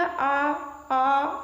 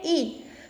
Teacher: जब आप आ बोलेंगे तो मुख द्वार जो है ये सबसे ज्यादा खुलेगा, आ। ठीक है, सबसे ज्यादा खुल रहा है, तो ये किसके अंतर्गत आता है, ये विव्रत के अंतर्गत आता है।